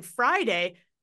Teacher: I've got my bottom lip and I've got my top teeth and they're making friction but I'm forgetting to to vibrate those vocals there so just